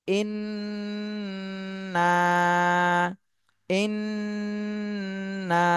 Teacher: করে এরপরে জবরের বামে খালি আলিফ টান দিতে হবে এক আলিফ প্রথমে গুন্না করতে হবে তারপরে এক আলিফ টান দিতে হবে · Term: ওয়াজিব গুন্না